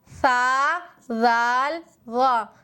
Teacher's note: زبان کی نوک ثنایا علیہ کے کنارے سے مل کر ادا ہوتے ہیں اور زبان تھوڑی باہر نکل جاتی ہے